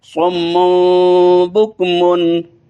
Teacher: صمن نون کو میم میں بدلنا ہے کیونکہ آگے با آئی ہے، اس وجہ سے یہاں اقلاب کریں گے